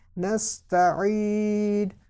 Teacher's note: اب یہ سین جو ہے نا اس میں بھی آپ سیٹی کے آواز سنیں گے نستعین. اب یہ یا ساکن سے پہلے زیر ہونے کی وجہ سے اس کو بھی لمبا کیا.